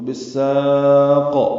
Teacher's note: سین کو لمبا کریں گے اور قاف پہ قلقلہ کریں گے